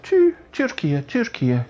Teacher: It's kind of not full blown U, but more kind of Türkiye, kind of relaxed, not so ooey. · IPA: [ty̠]